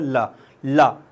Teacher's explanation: पार्श्विक पार्श्विक मतलब जिन व्यंजनों के उच्चारण में जीभ तालू को छुए किंतु पार्श्व पार्श्व मतलब बगल में से हवा निकल जाए उन्हें पार्श्विक व्यंजन कहते हैं। मतलब तालु को तो छुएगी ऊपर लेकिन बगल से हवा निकल जाएगी